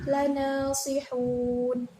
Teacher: Pada lafadz ini terdapat hukum bacaan mad arid li sukun sebab ada mad bertemu dengan sukun yang diwakafkan